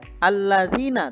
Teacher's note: yang jatuh setelah kasrah artinya terdapat huruf mad berupa Ya Sukun huruf mad ini disebut dengan Mad Thobi'i yang dibaca panjang 2 harokat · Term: mat tobingi